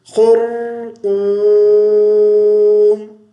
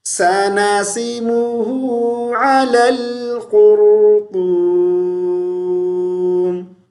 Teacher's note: یہ طا ہے, تا نہیں ہے. موٹی آواز سے پڑھیں گے